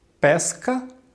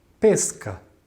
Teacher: a palavra pesca ela pode ser pesca com som grave que indica a fruta como pode ser também pesca que tem a ver com o substantivo de pescar